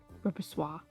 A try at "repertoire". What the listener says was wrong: Repertoire? There's no S in there. Repertoire.